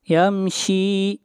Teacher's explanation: شین کو کھینچ کر پڑھیں گے ایک الف کے برابر